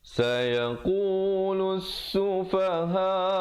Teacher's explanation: Sayaqu 2 harakat, lus lam baris depan terus naik di atas sin yang bersabdu, di situ ada lam syamsiah, lamnya tidak dibunyikan